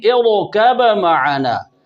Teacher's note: امام جزری رحمہ اللہ تعالیٰ کے نزدیک با میں اظہار بھی جائز ہے، لہذا اس کو ہم ایسے بھی پڑھ سکتے ہیں ارکب معنا۔